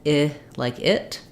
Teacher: the placement difference is that um I is high and front